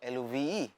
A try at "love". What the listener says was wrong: no, no. You're pronouncing L-U-U-R-R.